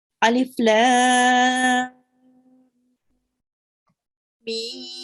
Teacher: Just try to prolong the lam for a bit longer, for 4 to 6 counts, and then stay on the meme. And again, try to prolong the meme for extra long.